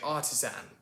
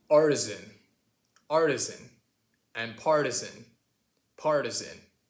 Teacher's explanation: another difference between our accents: the ast ending versus the uhst ending